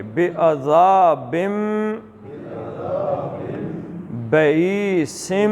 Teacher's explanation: تو یہ عذاب بن نہیں پڑھیں گے، بم پڑھیں گے